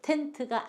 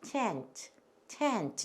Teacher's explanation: 우리나라는 T 발음을 할 때 혀가 입천장 앞쪽에 입천장을 치고는 치아 쪽으로 이렇게 떨어집니다. 그런데 그 사람들은 입천장을 치고는 저 목구멍 쪽으로 끌어갑니다, 혀를.